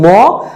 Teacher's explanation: নাসিক্য ধ্বনির ক্ষেত্রে বাতাস মুখ দিয়ে বের না হয় নাক দিয়ে বের হয়